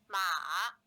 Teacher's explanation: low falling then rising tone with a two one four contour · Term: four third tone